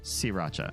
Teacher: in Thailand, they don't pronounce the R because it's hard.